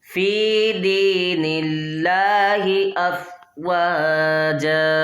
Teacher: جب بھی اللہ تبارک و تعالیٰ کے لام سے پہلے زیر دیکھیں تو ہم نے پھر اس کو باریک ہی پڑھنا ہے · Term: لام کو باریک